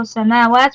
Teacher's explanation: Sab'a samawat, again, there's two alif maqsuras there, so samawat, make sure you extend both on ma and waw, two harakas